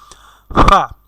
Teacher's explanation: 14 নম্বর মাখরাজটি হচ্ছে আমাদের সামনের নিচের ঠোঁট, আমাদের দুইটি ঠোঁটের নিচের ঠোঁটটির পেট অর্থাৎ মধ্যখান। তো নিচের ঠোঁটের পেট সামনের উপরের দুই দাঁতের আগা সেই নিচের ঠোঁটের পেটের সাথে লাগাইয়া পড়তে হবে একটি হরফ